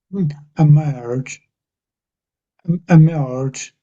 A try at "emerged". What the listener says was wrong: Yeah, I can't quite hear the ending, so it's more of a emerged. So it could be like a D sound, I suppose. Emerged or T, somewhere between a T and a D, I suppose. Emerged.